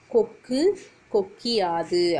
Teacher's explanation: நிலைமொழியோட ஈற்றுல இருக்கக்கூடிய உகரமானது இகரமாக மாறி வரும் அதே மாதிரி தனக்குரிய மாத்திரை அளவு இருந்து அரை மாத்திரையாக குறைந்து ஒலிக்கும் இரண்டாவது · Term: குற்றியல் இகரம்